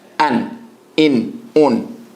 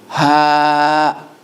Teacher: It is a definitive hamza. There is a cut-off with the hamza. There is a continuous airflow with the ha. So when you say the hamza, it's an a and a cut off, not a continuous airflow, as opposed to the ha, continuous airflow.